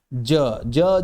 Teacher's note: जब हम बोलते हैं तो हमारी जीभ दंत मूल में लगती है।